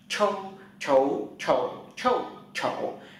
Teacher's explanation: đầu lưỡi nó cuộn lại và hơi bật ra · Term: cong lưỡi bật hơi